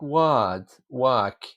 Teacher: the r is softened away